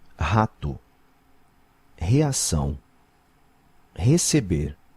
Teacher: when it's at the start of a word, you guys pronounce it like an H?